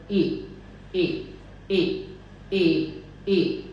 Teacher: और हमें ये ध्यान रखना है कि सबसे पहले जैसे मेरे माउथ पोजीशन शुरू हुई वावल ए ए ए ए ए, तो मेरी जीभ थोड़ी सी ऊपर उठी रहती है, जीभ टेंस रहती है